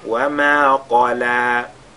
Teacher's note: la lettre Qaf lui avec at-tafkhim